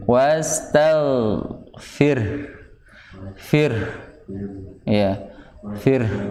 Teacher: Kalau wastaghfir berarti h-nya hilang nanti. Harus ada bunyi h-nya di ujungnya.